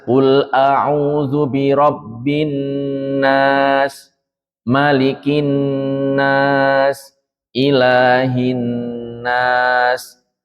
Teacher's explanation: Dibaca dua ketukan, ya, dua harokat seperti itu. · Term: hukum nun dan mim yang ditasydid